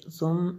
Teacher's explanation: ثم میم شدد ہے اس لیے غنہ کیا